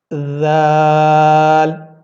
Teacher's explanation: دونوں آپ کے جو اوپر کے دانت ہیں اور جو نیچے کے دانت ہیں ان کے درمیان میں آپ نے اپنی زبان کو رکھنا ہے اور آپ اس حرف کو ادا کریں گے.